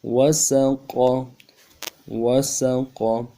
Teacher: قاف زبر قا، قاف زبر قا، موٹا ادا کرنا ہے، گلے کے اندر سے جماؤں کے ساتھ مضبوطی سے ادا کرنا ہے، اور زبان کا بیچ بھی اٹھانا ہے، تب موٹا ادا ہوگا۔